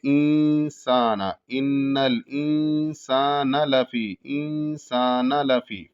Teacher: انسان، سین پتلا ادا ہوگا اور سین کے بعد الف ہے تو ایک الف کے برابر کھینچا جائے گا. انسانہ میں جو ہے نون پہ جو زبر ہے اس کو نہیں کھینچا جائے گا، یعنی جلدی سے پڑھیں گے کیونکہ وہاں کوئی کھینچنے والی چیز نہیں ہے.